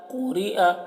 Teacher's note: قاف کو موٹا پڑھتے ہیں اور را کو باریک پڑھتے ہیں